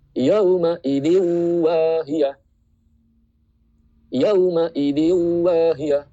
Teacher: Jadi tanwin in, n-nya itu hilang langsung masuk ke huruf wawunya.